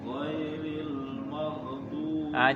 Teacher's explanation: Jangan mantul, maghdubi ngalir, maghdubi jangan mantul, maghdubi ya, jangan juga syiddah tertahan maghdubi, tapi maghdubi ngalir